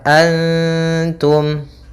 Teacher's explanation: Cara membacanya, samarkan nunnya kepada ta